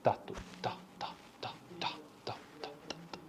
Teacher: É desvozeado, não há vibração.